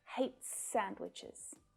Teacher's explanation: the s at the end of hates pulls together with the s from sandwiches